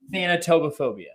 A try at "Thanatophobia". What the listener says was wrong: No, you added some tobos.